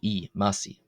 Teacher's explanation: This is the Coptic word for calf. Here the I is pronounced long. It's pronounced as a long E vowel